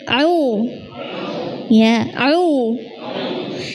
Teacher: ain yang dari tenggorokan hanya ainnya, suara u-nya itu dari rongga mulut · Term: ain dhammah